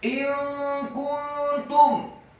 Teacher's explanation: nun yang sukun bertemu dengan huruf kaf. Hukum bacaannya adalah ikhfa, samar-samar.